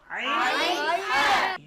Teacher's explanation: কণ্ঠনালীর মধ্যখান থেকে, হলকের মধ্যখান থেকে 2টি হরফ উচ্চারিত হয়